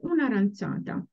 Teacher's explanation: Because there is a clash of vowels, so una aranciata, we just drop the first A of the article, the indefinite article.